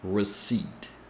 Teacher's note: You notice that there is no P sound in receipt? The P is silent here.